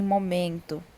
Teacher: Nós temos a penúltima sílaba em momento, porque o men é a mais forte